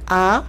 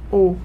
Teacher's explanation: o A, que é um som aberto, a gente faz A, O, e o O bem fechadinho. E você faz A, O, A, O, A, O.